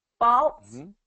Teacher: the quality changes a little bit because of that l sound in here